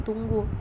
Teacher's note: fonem u ini mempunyai dua macam realisasi yang pertama dilafalkan sebagai bunyi u tinggi atas belakang bundar apabila berada pada silabel terbuka